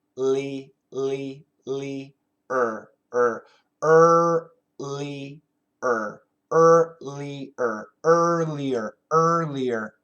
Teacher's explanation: tongue touches nothing the r sound